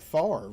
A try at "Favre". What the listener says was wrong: You're pronouncing French.